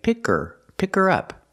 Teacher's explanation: you don't hear the H because the word her is not stressed